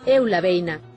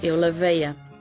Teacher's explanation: a diferenza aparece cando tras un ditongo o galego nasaliza o pronome e o portugués non